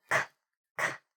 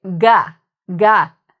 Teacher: So you can see with k, like the K sound, it's coming from the mouth. If I feel k, k, there's no buzz. But feel it when you say ga, ga. You'll feel a difference.